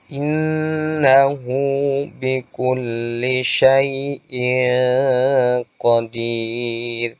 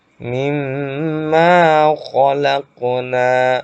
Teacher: Yang didengungkan adalah suara nun tasydid dan mim tasydidnya. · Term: gunnah